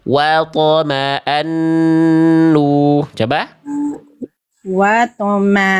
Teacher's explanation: yang sengau cuman ketika melafalkan an aja nun tasdid